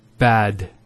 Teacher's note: Notice the elongation of the A sound.